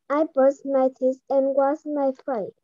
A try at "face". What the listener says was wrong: Not my face, my face. you have to say your S.